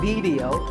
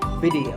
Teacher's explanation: both the I and the E are pronounced as short I sounds